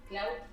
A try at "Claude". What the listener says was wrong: I say Claude. Yeah, because if you say cloud, I understand cloud like la nube. Yeah, cloud like iCloud. So cloud to me is the nube, and Claude is the AI.